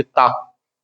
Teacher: जीभ इसमें दांतों से टकराती है। जो हमारी टंग है वो दांतों से टकराएगी, बिना उसके टकराए बोल ही नहीं पाएंगे।